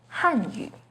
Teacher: the fourth falling tone on han